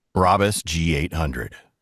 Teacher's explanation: Yeah, the T is not hit.